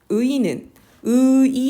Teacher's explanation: 의는, 의이 나눠서 발음했고요.